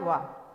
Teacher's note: अंतस्थ के अंतर्गत आता है वा, तो जब हम वा का उच्चारण करते हैं तो यह दंत और ओष्ठ दोनों की सहायता से इसका उच्चारण होता है।